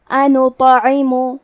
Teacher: عین کی ادائیگی حلق کے درمیان والے حصے سے ہے. عین کے نیچے زیر ہے تو ہمیں زیر کو ظاہر کرنا ہے.